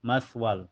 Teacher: mempunyai sifat hamas ya keluar napas ma matal wal setelahnya ada hukum idgam bila gunah karena tanwin fathah ketemu lam cara bacanya tanwin fatahnya dimasukkan ke lam tanpa ditahan tanpa didengungkan ya · Cara bacanya tanwin fathahnya dimasukkan ke lam tanpa ditahan, tanpa didengungkannya. Maswal. Cuma dimasukkan saja. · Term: idgham bila gunah